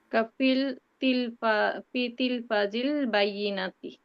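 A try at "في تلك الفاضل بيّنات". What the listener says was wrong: সো আপনি মানে কিছু অ্যাড করে ফেলছেন, মানে বাইনার আগে কিন্তু আল নাই, মানে অনেক সময় আমরা আল না দেখো আল বলে ফেলি। ফিতিল ফাজি বাইনা। হ্যাঁ, ফিতিল ফাজি বাইনাতি।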